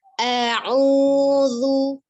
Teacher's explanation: Nah, maka perubahannya ya tidak dipatahkan tapi pertama huruf hamzah, kemudian kedua huruf ain ya, ada maqbi waw, jadi 2 harakat di ayun. A'udzu ya, zu-nya ujung lidahnya ada di ujung gigi seri atas. Zu ya seperti huruf sa tadi ya.